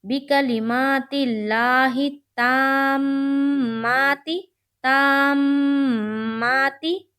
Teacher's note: کیوں؟ کیونکہ میم کے اوپر تشدید ہے، وہاں پر مشدد کا غنہ ہوگا۔ ایک الف کے بقدر ہم ناک میں آواز کو روکیں گے۔ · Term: میم مشدد کا غنہ